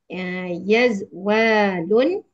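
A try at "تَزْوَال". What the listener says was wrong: Kenapa yaz? Tiz. Ti, bukan bukan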